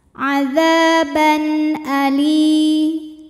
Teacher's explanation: dalalnya dua harakat adaban lalu berikutnya ada hukum izhar halqi sebab ada tanwin fathah menghadapi huruf halqi atau huruf tenggorokan yaitu Hamzah maka tanwin kita bunyikan dengan jelas